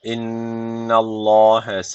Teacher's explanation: Mutlaka bir elif tutuyoruz. Allah lafzı kalın okunacak çünkü öncesindeki harf üstten bağlanmış.